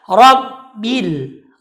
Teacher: Huruf bi itu sifatnya tipis, maka bacaannya adalah rabbil. Ra saja yang tebal, sedangkan bi-nya tipis, maka tidak boleh dibaca rabbi atau dibaca dengan rabbil, itu salah.